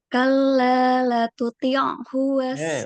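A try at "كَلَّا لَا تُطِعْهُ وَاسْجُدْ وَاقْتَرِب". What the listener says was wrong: Ulang. Itu ada madnya.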